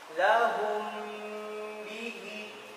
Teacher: Ya, kedua bibir rapat. Maka cara bacanya merapat dua bibir. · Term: Ikhfa syafawi